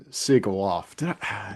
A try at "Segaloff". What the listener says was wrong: Segaloff, as if it's S-A instead of S-E.